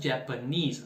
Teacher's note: japanese sílaba tônica é a última